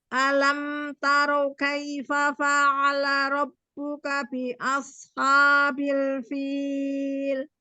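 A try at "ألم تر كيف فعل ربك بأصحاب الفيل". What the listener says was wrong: Rohnya tidak monyong, tidak taro, tidak taro. Taro, roh, ya tidak monyong ya, tetap terbuka. Alam taro kaifa fa'ala rabbuka bi ashabil fil.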